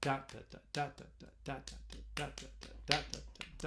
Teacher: It's kind of like it's stressed followed by two unstressed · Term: dactyl